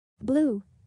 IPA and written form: bluː (Blue)